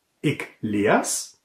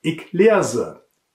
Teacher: Auch hier gibt es bei der ersten Person Singular zwei Möglichkeiten. Ik leers, kurz unbetont, oder ik leerse, lang betont.